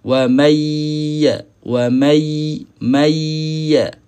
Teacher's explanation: Ada orang dia hanya idgham sahaja tapi tak naik ke hidung.